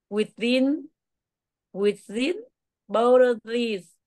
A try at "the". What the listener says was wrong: Cái chữ the này không phải là chữ thờ, đọc là the.